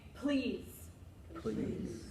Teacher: do you hear this burst or feel this burst of air that comes out